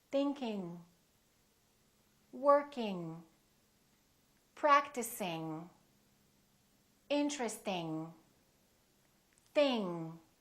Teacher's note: Remember, don't release your tongue and don't just produce the N in the front. It's a sound in the back. · If you release it, you can just release it a tiny little bit, going, tiny bit. Soft release or no release at all. It's kind of a nasal sound.